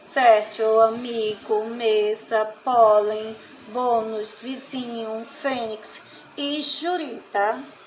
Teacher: podemos concluir que a posição da sílaba tônica nessas palavras é a penúltima sílaba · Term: paroxítonas